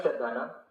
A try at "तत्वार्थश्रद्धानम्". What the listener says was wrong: श्रद्धा नाम नहीं बोलना, नहीं तो षष्ठी का बहुवचन हो जाएगा। श्रद्धा नाम बोलोगे तो ये प्रथमा का एक वचन है ना, रामम। हाँ श्रद्धानम, संस्कृत में यही अपने को समझना।